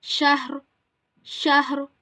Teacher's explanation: we need to pause and apply sukoon on ra, and we have to read it sheen ha ra zabar shahr.